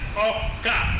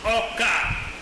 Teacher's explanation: In the language, words with the high-low pattern undergo an assimilatory process known as tone spreading, whereas whereby the low tone following the high tone is phonetically realized as a falling tone